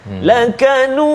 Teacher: Dengung juga dua harakat bunyi dia lakanuduwa. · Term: idgham ma'al gunnah